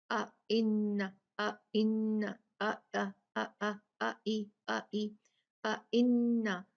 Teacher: اس کو اچھے سے آپ نے 2 کاؤنٹ غنہ کرنا ہے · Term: نون مشددہ